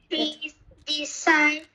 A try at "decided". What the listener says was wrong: With what? Decide with what? With what? With ED.